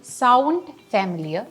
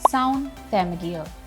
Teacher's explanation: the D is deleted when a word ending in n d links with another word which starts with the consonant sound when the D is deleted the N should smoothly link with